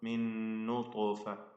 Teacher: ത്വാഇന്റെ സുകൂൻ ഖൽഖല നൽകി ശബ്ദം ചലിപ്പിച്ച് വ്യക്തമാക്കണം. ത്വാഇന് തഫ്ഖീമും നൽകണം.